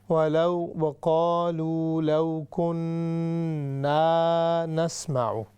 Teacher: یہ جو کننا ہے اس کو ہم تھوڑا سا لمبا کریں گے چونکہ اس کے آگے الف آ رہی ہے